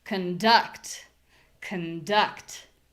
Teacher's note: So, my voice is low. My vowel is unclear. It's not ah, it's uh uh and it's short. This unclear vowel, hopefully you guys can notice that it sounds kind of like I just don't have a vowel at all.